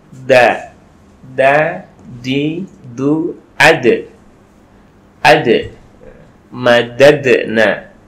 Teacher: ujung lidah kita, ujung lisan kita itu menempel di pangkal gigi seri atas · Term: dal